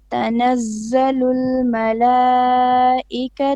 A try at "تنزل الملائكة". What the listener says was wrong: You stretch the two. You said malaika two. You mean the long vowel. Now here we have a mud on the mala. This is a mud which you have to do. It's called mud al muttasil. Normally 4 or 5 beats. But don't stretch the two.